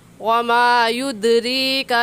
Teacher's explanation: युद्रीका में दाल हुरूफ़े कलकला में से है, तो यहाँ पर कलकला करके पढ़ेंगे